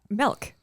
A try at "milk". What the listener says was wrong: You say it with a E.